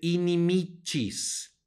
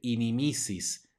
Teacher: nuevamente suena como Che porque está seguida de una y